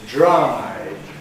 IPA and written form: dɹ̝aɪ (dry)